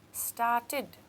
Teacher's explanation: I can hear the id as I say the end of the word started, so it goes in my id column with waited.